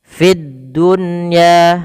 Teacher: Fid dunya ada di sini alif lam, kita namakan dengan alif lam syamsiyah, yaitu alif lam yang tertulis tapi tidak dibaca lamnya, langsung ke huruf dal dan dia ditasydidkan